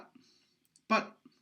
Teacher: or a b i am in for fact pronouncing a p i'm just pronouncing it with a very short voice onset time